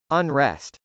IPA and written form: ənrˈɛst (unrest)